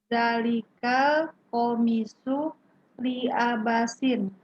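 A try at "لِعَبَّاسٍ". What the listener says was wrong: Li'abbasin gitu Bu ya. Yang li'abasin nanti dikira abas.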